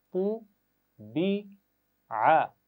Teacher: یہاں پر عین کی آواز ادا کرنی ہے گلے کے درمیان سے